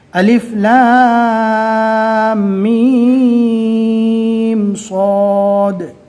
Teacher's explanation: تینوں حروف پر مد ہے لہٰذا ان تینوں حروف کو کم سے کم 3 اور زیادہ سے زیادہ 4 الف کے برابر کھینچ کر پڑھیں گے، اور الف کے اوپر کوئی حرکت نہیں ہے لہٰذا الف کو نارمل پڑھیں گے۔